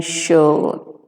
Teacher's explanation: So, it is a central vowel, unrounded vowel, and the tongue is raised to a height between half open and half closed positions. This is the half open position and this is the half closed position, and it is produced here. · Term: long O